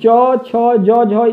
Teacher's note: इनका उच्चारण जो है दोस्तों आपका ये तालव्य होता है यानी कि तालु से होता है